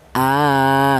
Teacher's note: Ini menunjukkan bahwa hamzah tersebut dibaca panjang yaitu panjangnya dua ketukan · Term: mad badal